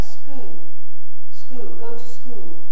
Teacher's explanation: And the L has completely disappeared, and because it's already very rounded and close, there's no attempt to make a different kind of vowel sound out of it.